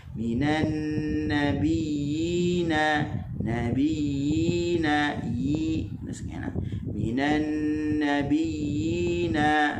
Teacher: Adapun huruf ya, dia bersifat dengan rakhawah. Maka dia ada lagi laluan suara untuk keluar, dia tidak rapat.